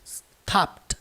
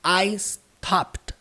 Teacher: Percebam que a pronúncia disso aqui não é com necessariamente ED no final. Pela transcrição fonética, você percebe que o som é com T. Stopped. Portanto, se você quer falar eu parei, I stopped. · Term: sonzinho de T